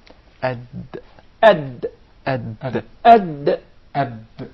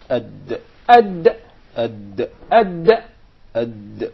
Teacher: The dal is pronounced from the top side of the tip of the tongue and the gum line of the two front upper incisors.